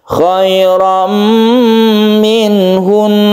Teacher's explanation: Karena ini adalah gunnah musyaddada yang merupakan tasydidnya itu adalah tasydid yang asli, maka dia tetap berdengung